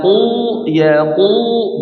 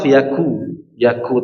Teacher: Tapi kalau qof ya jadi suaranya pun tebal ya, menebal suaranya pun menggemuk ya suaranya menggema.